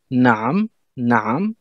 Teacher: naam avec un R en fond de gorge, un peu un resserrement de la gorge